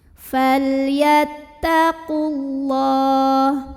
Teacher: Lam pada lafaz Allah dibunyikan secara tafkhim karena huruf sebelumnya berbaris di atas. Jadi bacanya tebal, pangkal lidah naikkan.